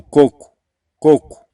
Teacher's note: você vai perceber que o segundo o ele é pronunciado como se fosse com o som de u coco coco Então essas pessoas tendem a querer levar a diferença · Se a gente for analisar a pronúncia da palavra coco, se você analisar com muita calma e com muita atenção, você vai perceber que o segundo O, ele é pronunciado como se fosse com o som de U